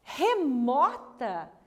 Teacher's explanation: Remota. O mó é a sílaba mais forte, portanto, é a sílaba tônica.